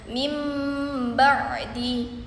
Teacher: Misalnya mim ba'di yang terdapat nun sukun bertemu dengan ba. Cara membacanya ee menjadi bunyi mim dengan mendengung. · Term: iqlab